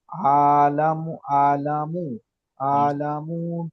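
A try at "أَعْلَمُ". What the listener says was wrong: এখানে হামজা আইন সাবার আলা এখানে আলামু হয়ে যাচ্ছে শুধু হামজা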